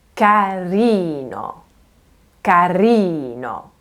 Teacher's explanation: Can you hear how I'm leaning on that second to last E sound? Okay? So try to, overemphasize this, really play with it so that you can get your head around.